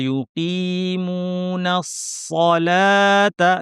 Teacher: লামটা কিন্তু পাতলা হবে। সদের সাথে যেন এই লামটাও ভারী না হয়। লাম কখনোই ভারী হয় না, একমাত্র আল্লাহ শব্দের লাম ভারী হয় যদি শুরুতে জবর অথবা পেশ থাকে।